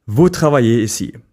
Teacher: vous is pronounced voo with a silent S at the end